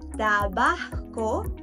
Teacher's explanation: there are some places in Mexico where they aspirate the letter S